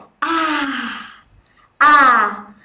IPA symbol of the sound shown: a: